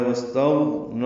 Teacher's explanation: سین ساکن پہ ہمس ہوگا، غین ساکن ہے اس پہ اظہار ہے ، واستغنى